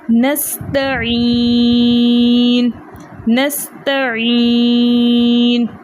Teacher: ٹھیک ہے، اگین یہاں پر یا مدہ تھی، یا مدہ کے بعد نون کا سکون عارضی تھا، اس لیے یہاں مد عارض بنی، تو ہم نے اس کو کھینچ کر پڑھا